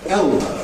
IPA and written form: ˈeɫbəʊ (elbow)